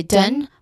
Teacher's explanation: dun, which has a short and quick unstressed vowel sound in the middle